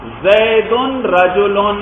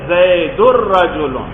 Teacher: را مشدد ہو جائے گی، نون بیچ میں سے ختم ہوا، زید الرجل۔ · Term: ادغام